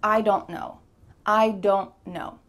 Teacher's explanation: my tongue is stopped at the top of my mouth, this is called a stopped T